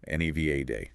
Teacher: There's a common variation stressing the first syllable. Neva day often heard on national news, but the locally preferred and generally accepted standard pronunciation stresses the second syllable with a short a sound like in cat.